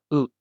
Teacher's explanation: do not round your lips like we do in English. Keep them relaxed. It's a much flatter sound.